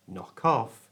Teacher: Notice here, I didn't just move the K, the K sound from knock to the front of off